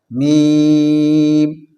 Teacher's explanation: میم کا مخرج ہے دونوں ہونٹوں کی خشکی کا حصہ